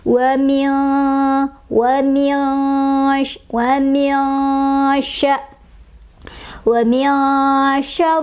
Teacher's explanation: Sebabnya karena ada nun sukun bertemu dengan syin. Dibacanya disamarkan sambil berdengung ya. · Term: ikhfa ausath